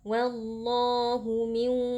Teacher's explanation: nun sukun kita masukkan ke dalam wau disertai dengan dengung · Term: idgham bhunah